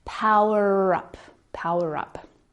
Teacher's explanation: the ER is silent unless the word following starts with a vowel and then the ER sound becomes a linking sound